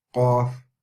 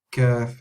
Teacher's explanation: So if you say Qaf, it's right at the back. Kaf, it's just a little bit more forward.